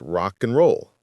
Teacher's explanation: The d is gone. · do you ever hear the D in and? No, never. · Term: dropped sounds